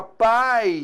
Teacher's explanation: na palavra pai, eu tenho vogal A e o I é a semivogal. A letra I produzindo o som I.